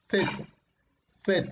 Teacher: si tú dices la Z, vas a darte cuenta que tu lengua se ubica entre tus dientes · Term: interdentales